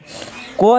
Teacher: क जब भी बोला जाता है कंठ से बोला जाता है, क्योंकि को बोलते समय हृदय से निकली हुई प्राणवायु कंठ से निकलती है। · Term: कंठीय वर्ण